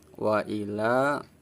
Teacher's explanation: Ketika ada huruf hijaiyah berharokat fathah berdiri ya dibaca panjang. Yang dipanjangkan huruf lam fathah la-nya, ukuran panjangnya 1 alif 2 harokat.